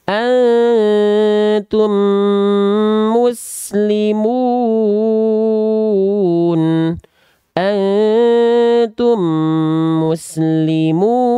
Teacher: Dikasih kode blok warna, itulah kode N tadi, idgham mithlain. Leburkanlah bunyi mim mati berwarna pink yang bertemu dengan huruf mim yang bertasydid disertai dengung selama 2 harokat.